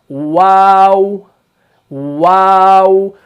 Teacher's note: दोनों होंठों को गोल करने से हरफ वाव अदा होता है। इसका आपने खास ख्याल रखना है।